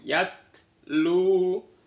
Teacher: Kemudian yatlu, taknya tatitubat. Pada saat tak mati itu selalu ada desisan angin.